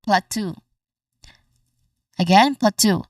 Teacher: The stress is on the second syllable, tu.